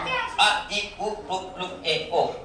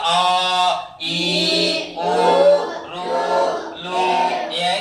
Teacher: ఇవి పలకడానికి 2 మాత్రల కాలంలో పలుకుతాం. అంటే 2 చిటికెలు వేయడానికి ఎంత సమయం తీసుకుంటుందో ఆ సమయంలో పలికే అక్షరాలను దీర్ఘాక్షరాలు అంటారు.